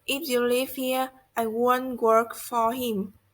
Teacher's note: In a conditional sentence, the tone rises in the if clause and falls gradually in the main clause.